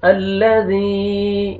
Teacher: زال کو نرمی سے ادا کریں گے تاکہ زا میں مکس نہ ہو ساؤنڈ۔ الذی، یا مد ہے، یا جزم سے پہلے زیر ہے، زال کو آپ نے کھینچنا ہے، اوپر مد جائز ہے، 3 سے 4 الف کے برابر آپ نے ایکسٹرا کھینچنا ہے۔